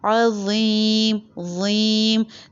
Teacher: زبان اوپر کے دانتوں کو ٹچ کرے گی لیکن ہیوی ساؤنڈ آئے گا